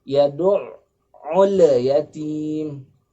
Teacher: Alif lam al-qamariyah pada al-yatim dibaca dengan qalqalah atau dengan membal.